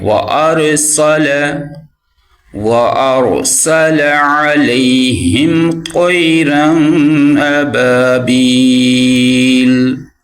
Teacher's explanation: وارسل، را کو موٹا پڑھیں گے، سین کی آواز جو ہے وہ سیٹی کے ساتھ نکالیں گے